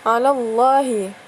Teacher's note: lam lafal jalalah lafal Allah ya datang setelah Fatah ya jadi dibaca tebal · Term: lam tafkhim